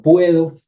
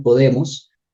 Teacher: aquí tengo una diptongación en sílaba acentuada